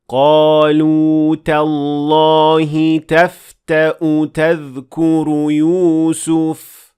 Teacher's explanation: we did not extend the waw. We only pronounced a dhamma.